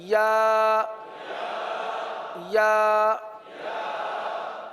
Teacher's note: حمزہ. یا، زبان کا درمیان اور تالو کا درمیان